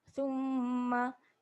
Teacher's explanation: Summa dengung 2 harakat. Jangan pendek sangat dengung tu.